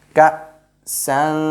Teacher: We will not say sun, you know, sin with two fathas called sun, but the end sound will not be clear. We will make it ikhfa, or we will hide it into our nose.